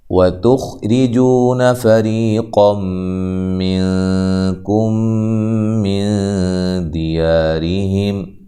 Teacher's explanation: واو کو ادا کرتے ہوئے ہونٹوں کو گول کرنا ہے، تا کو باریک پڑھنا ہے، خا کو موٹا ادا کرنا ہے، ٹھیک ہے۔